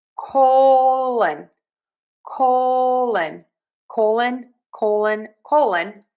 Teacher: I am ending that word in a schwa